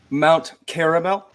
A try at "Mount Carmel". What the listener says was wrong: No, Carmel. No extra A in there.